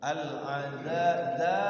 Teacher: alnya bunyi jadinya al qamariyah, jelas bunyi alnya.